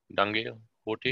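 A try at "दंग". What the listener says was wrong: Danga, not dange. Dange means riots.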